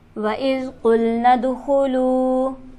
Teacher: دال پر ہمارے پاس حرف قلقلہ موجود ہے, یہاں پر آواز اچھلتی ہی معلوم ہوگی